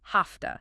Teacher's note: Because the V in have is voiced, but the T in to is voiceless. The V often becomes voiceless too, sounding like an F. So have to becomes hafta.